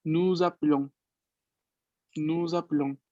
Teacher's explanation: La E casi no se escucha, es como si yo pasara de la P a la L directamente